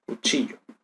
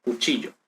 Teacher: el yeísmo consiste en la deslateralización de esta lateral